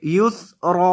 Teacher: را کو موٹا کریں گے کیونکہ را کے اوپر زبر ہے